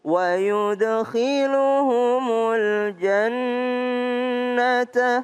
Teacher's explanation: nun tasdid maka berdengung